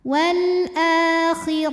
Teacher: huruf dibunyikan secara tafkhim karena ro berbaris di atas maka dibacanya tebal